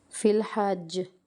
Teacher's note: قلقلہ ہو رہا ہے، قلقلہ اکبر